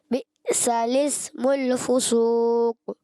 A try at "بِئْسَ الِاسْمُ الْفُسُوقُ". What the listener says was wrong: فسوق، قاف کی پیش بھی پڑھنی ہے آپ نے، وقف نہیں کرنا. اچھا بئس میں حمزہ کو آپ جھٹکا دیں گے، مگر لام کو آپ نے نہیں ہلانا، لام میں جھٹکا نہیں. بئس الاسم الفسوق.